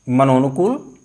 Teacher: जब संधि करेंगे तो विसर्ग के स्थान पर ओ हो जाएगा और इस तरह से विसर्ग के स्थान पर ओ हो करके मनो और अनुकूल, ये विसर्ग और ओ आ मिलकर के ओ बन गए, मनोनुकूल।